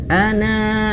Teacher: Alifnya tidak dibaca sehingga dia tidak perlu dipanjangkan.